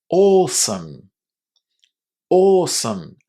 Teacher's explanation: The a w at the beginning of this word is simply pronounced as a long o not o or awesome.